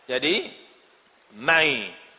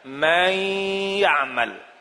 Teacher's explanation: Ada terasa dengung di hidung kita. Ada rasa idgham di lidah kita. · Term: idgham bigunnah